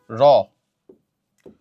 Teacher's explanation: র হচ্ছে কম্পনজাত ধ্বনি